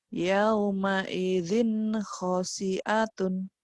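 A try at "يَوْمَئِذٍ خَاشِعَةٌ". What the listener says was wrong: Kho-nya panjang. Shin-nya besar. Shin. Yauma idzin khasyi'atun.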